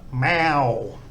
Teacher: they've combined the sara air and the wan, and that makes a kind of owl sound.